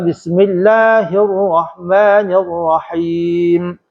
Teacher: lidah supaya tak tergetar terlebih getar lidah tu pada sebutan ra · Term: takrir rak